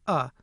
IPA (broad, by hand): ʌ